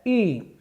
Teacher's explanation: तो ई का उच्चारण स्थान क्या हो जाएगा तालु।